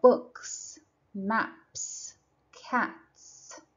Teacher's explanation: after these unvoiced sounds this s sound is produced